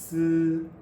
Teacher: To make the sound, the lips part and the corners pull back a little, while the very tip of the tongue comes close to the lower teeth, without actually touching it. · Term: fricative consonant